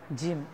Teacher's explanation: জিহ্বা উপরের দাঁতের, সামনের দাঁতের গোড়ার সাথে লাগিয়ে আপনাকে জিম উচ্চারণ করতে হবে